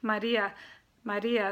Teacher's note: it sounds like a little D like if you say Maria